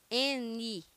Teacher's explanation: O N, ele é linguodental, tá? N, então ele fica a língua nos dentes.